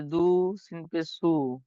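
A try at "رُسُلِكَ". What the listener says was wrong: দাল নয় র, দাল নয় র, র পেশ রু, সিন পেশ সু, দুটো একসঙ্গে বলেন রুসু।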